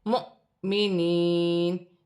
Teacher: حمزہ پر جزم کی حرکت ہے، جھٹکے کے ساتھ پڑھا جائے گا